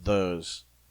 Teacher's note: I make a voiced th sound as in those